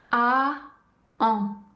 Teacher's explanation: la bouche prend la même forme que pour prononcer le son A. Et ensuite, le son devient nasal. Encore une fois, on garde bien la langue à plat dans le fond de la bouche. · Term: son en